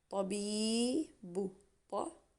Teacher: That's our vowel, the mad bil ya, which gives a e sound.